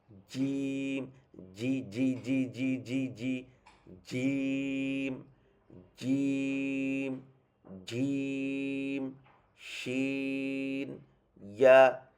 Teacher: জিম শিনিয়ার সময় কিন্তু তেমন ভাইব্রেট হবে না, এটা একদম এটা কি বলে, একদম সিল মারার মতন আর কি, একদম একদম টাইট করে লাগবে, তারপর উচ্চারণটা আসবে।